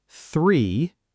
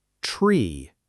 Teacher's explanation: 3 has that soft, airy TH. Tree has a strong T sound.